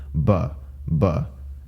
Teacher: the b in english is pronounced as a bilabial plosive a voiced bilabial plosive it's bilabial because both it's bilabial because both of your lips